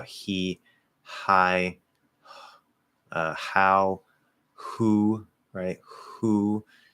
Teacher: It's an H. It's just, it's always colored by the vowel after it.